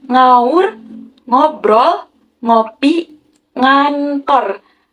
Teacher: Adapun pengertian dari nasal dorsovelar ini, nasal ini terjadi karena proses penghambatan pada artikulator aktif, yakni pangkal lidah atau dorsum dan langit-langit lunak atau velum